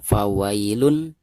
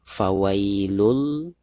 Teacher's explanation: Lalu di depan tanwin domahtain tersebut ada huruf lam yang merupakan salah satu daripada huruf idgham, dan lam ini termasuk idgham bila guna. Nah, maka cara membaca tanwin yang di atas lam ini itu harus diidghamkan langsung ke huruf lam yang ada di depannya